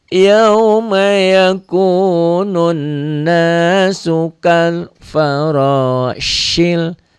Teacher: Ini fathahnya bukan dengan alif, tapi fathahnya dengan waw mati. Karena fathahnya dengan waw mati maka jadi diptong.